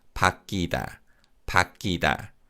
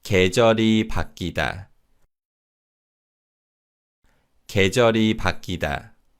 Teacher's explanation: 계절이 바뀌다. And in terms of pronunciation, the we vowel in 귀 weakens, and this is pronounced 바뀌다, 바뀌다.